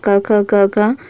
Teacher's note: क ख ग घ ये सभी कंठ से उच्चारित होते हैं